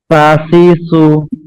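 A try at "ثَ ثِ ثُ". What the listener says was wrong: একটু নরম হয়ে যাচ্ছে, শক্ত করতে হবে। আচ্ছা আমি হয়তো পার্থক্য বুঝতে পারতেছেন না আব্দুর রহমান ভাই, একটু খেয়াল করি, আমি সিনেটা আগে উচ্চারণ করতেছি, শাশিসু। আর এটা আপনি যেটা বলতেছেন এটা হচ্ছে এই যে এটা সাসিসু, এটা হচ্ছে, কিন্তু এই যে পরে যে এটা হচ্ছে না, এটা একটু সুন্দর হবে, শাশিসু। 60% হচ্ছে, আরো 40% বাকি আছে, আর একটু জোরে বললে হয়ে যাবে, শাশিসু।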